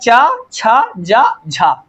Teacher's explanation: तो चार हमारे स्पर्श संघर्षी व्यंजन है।